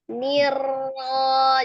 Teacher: Nirra itu ada ro. Huruf ro-nya tawassut. Nirra. Jadi jangan nirra, niu, jangan pakai niu atau nir rojim.